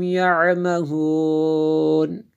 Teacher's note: آخری لفظ کو ہم تھوڑا سا لمبا اس لیے کر رہے ہیں کہ یہاں پہ ہم مد عارض کر رہے ہیں